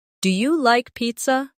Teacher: Make sure your voice rises at the end. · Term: intonation